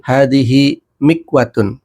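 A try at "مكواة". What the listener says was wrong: Kurang tepat. Panjang pendeknya kurang tepat. Ayo panjang. Mikwatun. Bukan mikwatun ya. Mikwatun.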